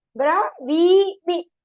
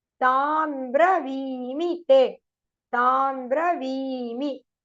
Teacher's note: V is long, me is short.